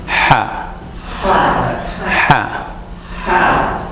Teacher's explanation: And there's no nasal sound to it. There's no or anything from the top of your mouth, just your throat.